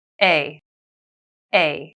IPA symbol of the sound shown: eɪ